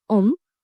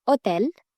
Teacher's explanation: you can notice that we do not pronounce h in French